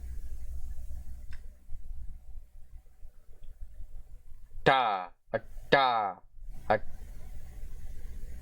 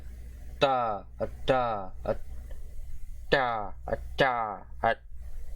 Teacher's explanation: Voiceless, palatalized alveolar plosive consonant.